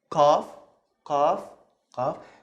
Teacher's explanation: So it's like the K, but you have to also to open your throat a little bit.